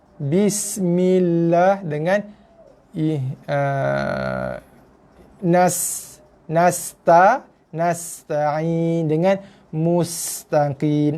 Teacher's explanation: Memang sin bila berbaris mati datang sifat sofir, desir. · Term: sin mati